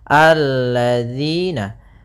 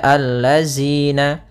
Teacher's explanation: Kemudian pada lafal di sini hati-hati dalam pelafalan jangan dibaca allazina. Yang sering terjadi kesalahan adalah membacanya zal dengan zai